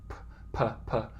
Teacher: you'll feel there'd be a puff of air that comes out, more for P's than for T's or for K's, p. And if that happens, you can get what's called clipping in the waveform.